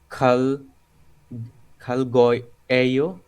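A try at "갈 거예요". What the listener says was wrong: না, রিউলের পরে গিয়কটা ক এর মতো হয়ে যায়, ক। খাল ক ইয়েইও।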